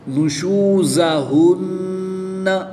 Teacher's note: اس میں زا ہے، سٹی کی آواز کے ساتھ اس کی ادائیگی کریں گے